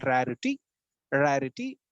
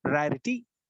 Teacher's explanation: you have a stressed syllable followed by two unstressed syllables